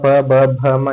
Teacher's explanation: ಎಲ್ಲ ತುಟಿ ಜಾಯಿಂಟ್ ಆಗಿ ಉಚ್ಚಾರ ಆತವು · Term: ಓಷ್ಟ್ಯ